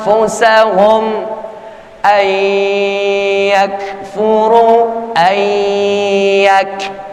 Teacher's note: Nun mati bertemu dengan huruf ya, yaitu idgham bigunnah